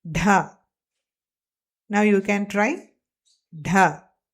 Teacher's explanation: It is the aspirated partner of da. Da with more airflow.